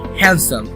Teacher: But in case of pronunciation, you don't need to actually pronounce the D. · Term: silent letters